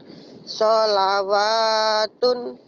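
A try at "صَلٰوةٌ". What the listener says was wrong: Solatun. Wanya gak dibaca. Solatun. Kenapa gak dibaca? Karena wawunya gak ada barisnya.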